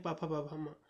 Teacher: प वर्ग के हैं जो कि होठों से बोले जाते हैं